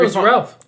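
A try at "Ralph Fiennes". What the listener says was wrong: No, it's Rafe. Ralph is pronounced Rafe in his name, not Ralph. It's spelt Ralph, but pronounced Rafe.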